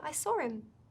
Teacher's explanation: We could say I saw him, but a lot of native speakers will drop the h and just go, I saw him.